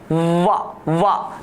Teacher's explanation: दंत ओष्ठ अर्थात दांत और ओष्ठ दोनों का सम्मिश्र रूप जो होता है वो वा के रूप में जाना जाता है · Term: दंतोष्टिम